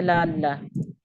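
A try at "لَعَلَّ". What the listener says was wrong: ला को लंबा नहीं करना, सिर्फ जबर है।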